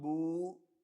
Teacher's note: This Dhamma will be stretched by double to become Boo.